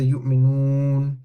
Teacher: But if I say yu'minun, there's some sound coming through my nose as well. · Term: nasalization